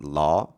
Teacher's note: law, and that's somewhere in between the o and ah sound. And in, of course, British English, modern British English, it's an o, law, the law.